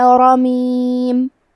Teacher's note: کلمت رمیم میں حرف الراء کو تفخیم سے پڑھیں گے کیونکہ اس پہ زبر ہے